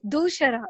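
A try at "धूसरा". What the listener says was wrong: Dusara, not shara. Sa. Dental. It is dental sakara.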